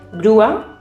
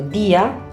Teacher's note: esos sonidos vocálicos se consideran en sílabas diferentes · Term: hiato